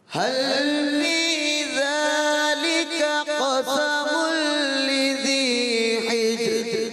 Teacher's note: قاف کی ادائیگی اور پر کریں، تھوڑا قاف کو اور پر کریں. دوبارہ دوسرا جو قاف ہے وہ پر رہے نا.